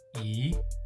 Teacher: 个 is fourth tone, so E becomes second tone